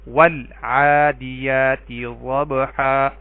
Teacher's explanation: یہاں پہ دیکھیں عین حروف قمری میں سے ہے تو ال کا لام پڑھا گیا